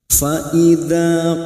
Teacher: fathah bertemu alif mad tabi'i, 2 harokat kita panjangkan